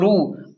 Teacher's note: را کو موٹا پڑھیں کیونکہ را پر پیش ہے